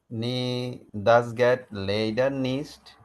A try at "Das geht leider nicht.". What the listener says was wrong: Leider nicht. Das geht leider nicht. EI আসছে আবার। এই যে এখানে নি পড়ছেন না, এটার উচ্চারণ নি না, এটার উচ্চারণ হলো নে, ডাবল ই। ই এর উচ্চারণ কি জার্মান ভাষায়? এ।